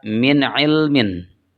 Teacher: Di sana ada nun mati kemudian diikuti oleh ain sehingga dibacanya idhar atau jelas.